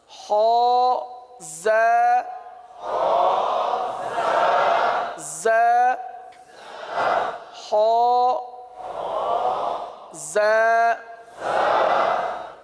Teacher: زا زال تو زبان کا سرا اوپر کے دانتوں کے اندرونی کنارے سے ادا ہوتا ہے، اور یہ زا دونوں دانتوں کو بند کر کے زبان کو نیچے لگاتے ہیں. زا اس میں سیٹی کی آواز ہے